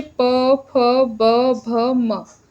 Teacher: तो इस तरीके से आप बोल सकते हैं कि जो द्योष्ठ व्यंजन है वो प, फ, ब, भ, म है जिसमें दोनों होठ मिलते हैं